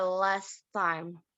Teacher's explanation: most people drop the first T, so the consonant cluster S and T at the end of last becomes simply S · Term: consonant cluster simplification